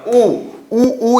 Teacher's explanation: तो जब हम उच्चारण करते हैं तो वृत्त बनता है इसीलिए इसे क्या कहा जाता है वृत्ताकार स्वर कहा जाता है